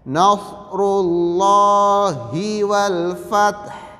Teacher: Apabila ada lam jalalah sebelum lam jalalah itu harakatnya kasrah maka dia dibaca tipis, dibaca lah. Sedangkan ini lam jalalah sebelumnya berharakat dhammah maka dia dibaca tebal, dilafalkan loh